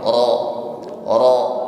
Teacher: mengucapkan ra baris fathah berarti tafkhim ra-nya